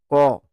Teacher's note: একদম জীভের ভিতর দিকটা উপরের ওই তালুটাতে স্পর্শ হচ্ছে হালকা হলেও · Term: কন্ঠ ব্যঞ্জন